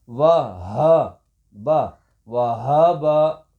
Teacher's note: اچھا واو باریک آواز، ہا بھاری آواز یعنی سینے کی طرف سے اس کی آواز آئے گی